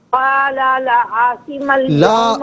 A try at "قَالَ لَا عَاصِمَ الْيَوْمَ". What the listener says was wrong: لا کو ذرا کھینچیے نا، لا عاصم